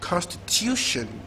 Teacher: secondary stress first syllable, primary stress third syllable.